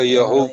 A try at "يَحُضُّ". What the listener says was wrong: يحض حا نکالنا ہے نا. يَحُضُّ.